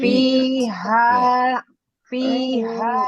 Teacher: Ujung gigi atas Bunda e sentuhkan ke perut bibir bawah